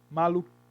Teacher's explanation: o I com N, ele passa por um processo de nasalização. É como se sobre o I tivesse uma espécie de tio, maluquinho.